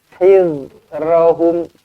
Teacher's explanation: Jangan hizra, nanti dia jadi huruf zai pula. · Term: Zal